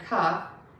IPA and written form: kʌf (cuff)